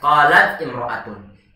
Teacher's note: Saat berada dalam pertengahan kalimat, maka hamzahnya tidak kita baca. Walaupun dari segi penulisan tetap kita baca, tetap kita tuliskan, cuma dari segi bacaannya tidak kita baca. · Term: hamzah wasal